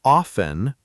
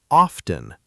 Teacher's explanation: This one actually has two accepted pronunciations. Some say often with a silent T and some say often with the T pronounced. Both are fine, but the silent T version is more common in natural speech.